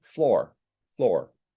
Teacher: the r is not dropped as far as I can hear